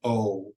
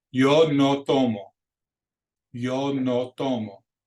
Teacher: in Spanish words and it's just always a consistent short pure vowel like the word no